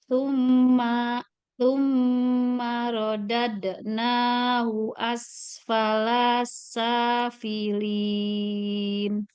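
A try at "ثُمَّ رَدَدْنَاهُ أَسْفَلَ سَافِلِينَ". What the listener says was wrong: Falasa. Jangan falah.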